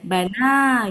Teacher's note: Jadi ya-nya nggak dibaca. Dibacanya panjang, Bu. Oh. Jadinya bana gitu.